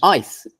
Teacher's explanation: in ice the vowel is compressed because it's followed by an unvoiced consonant